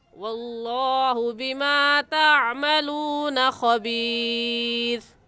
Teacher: واللہ میں لفظ اللہ سے پہلے زبر آ گیا تو لفظ اللہ کو پر یعنی موٹا کر کے پڑھیں گے، اور بما تعملون صفات کا خیال رکھیں گے، تا کی جگہ طا پڑھنا درست نہیں ہے، اور عین حلق کے درمیانی حصے سے نکلتا ہے، نکال کر پڑھیں گے۔